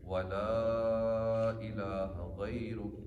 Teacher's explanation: اس ولا کو تھوڑا کھینچنا ہے کیونکہ اوپر مد ہے. لام پہ زبر بھی ہے، آگے الف بھی ہے، اوپر پھر مد بھی ہے.